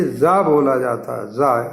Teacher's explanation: लेकिन अगर हम डॉग बोलें, डॉग कुत्ता, तो डॉग में जब एस लगाते हैं तो ये जा बोला जाता है, जा, सा का वॉइस्ड फॉर्म है जा